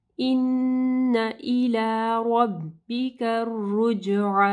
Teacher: नून मुशद्दद है, यहाँ पे गुन्ना होगा